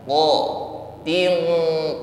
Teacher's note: huruf q yaitu lidah paling belakang ya naik ke langit-langit lunak